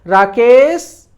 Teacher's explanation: क में जो ए है उस पर हम बल दे रहे हैं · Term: बलाघात